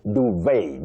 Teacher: So the second one, >> the t is silent. The spelling is d u v e t. But the t is silent. So you say duvet.